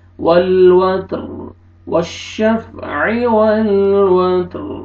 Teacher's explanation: اور را کو پر کریں گے کیونکہ را سے پہلے ساکن، ساکن سے پہلے زبر